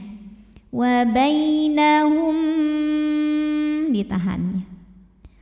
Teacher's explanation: mim pertama dimasukkan ke mim kedua disertai bunyi dengung bunyi masuk hidung